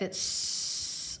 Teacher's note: Because that T is making an unvoiced sound, so the S is unvoiced.